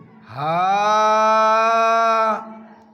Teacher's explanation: یہ سینے کی طرف سے آخری حلق سے نکلے گا. جیسے ہم بولتے ہیں اسی طریقے سے بولیں گے آسانی سے.